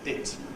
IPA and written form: ɪt (hit)